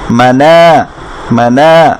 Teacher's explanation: এরপরে এখানে দেখি মিমের উপর আযুক্ত করা মা, নুনের সাথে আযুক্ত করা না ছিল, কিন্তু এর বামে খালি আলিফ থাকাতে এই নাটাকে আমরা এক আলিফ মাত করতে হবে, অর্থাৎ টেনে পড়তে হবে